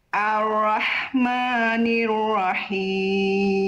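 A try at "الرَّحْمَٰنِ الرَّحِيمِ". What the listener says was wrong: Oke, diangkat lagi pangkal lidah huruf ro-nya dan jangan di-o-kan ya. Ar-ro, jangan sengaja di-o-kan. Ar-Rahmanir-Rahim.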